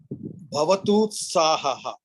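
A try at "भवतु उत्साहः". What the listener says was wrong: Well done. Well pronounced.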